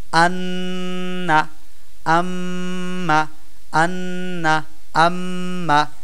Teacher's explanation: আবশ্যকীয় ভাবে গুন্না করে পড়তে হয় মানে নাকের মধ্যে নিয়ে পড়তে হয় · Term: ওয়াজিব গুন্না